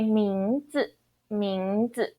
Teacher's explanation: in Taiwan when we pronounce name, this word, we say 名字 neutral tone or fifth tone or no tone